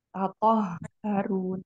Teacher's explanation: makhraj huruf H kan ada di tenggorokan bagian bawah